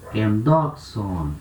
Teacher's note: Então a última sílaba, vogal longa, sílaba longa. Então acento ele pula uma casa para frente.